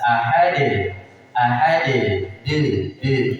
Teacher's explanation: Kemudian ahadil ahadil di situ ada qalqalah dan disebut dengan qalqalah kubro karena di akhir besar sehingga untuk memantulkannya itu harus jelas